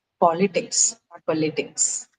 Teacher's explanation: Ideally, it should have been on uh the second syllable, but politics works a little differently. For politics, the uh stress is on the first syllable.